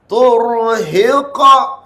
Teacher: Dia qalqalah dia kuat dia berbeza dengan bajim dal. Dia huruf ta dan huruf qaf yang bunyi detakan yang kuat.